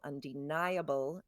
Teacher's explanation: Undeniable, it's on the third syllable. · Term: accent